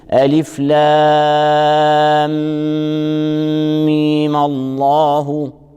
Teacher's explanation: الوجه الأول هو أن نعتد بالحركة العارضة، بالميم العارضة، كوننا سنفتح الميم للتخلص من التقاء الساكنين، نعتد بالفتحة العارضة ونمد، يكون المد مدا طبيعيا بمقدار حركتين